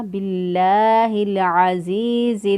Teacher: عین جو ہے اس کو وسط حلق سے ادا کیا، زا کی ادائیگی میں سیٹی جیسی آواز آنی چاہیے، عزیز، یا ساکن سے پہلے والے حرف کے نیچے زیر، یا مدہ ہے، एक अलिफ के बराबर इसको लंबा करेंगे।